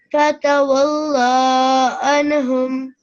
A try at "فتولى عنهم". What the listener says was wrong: So make the lam shorter. Fatawalla anhum.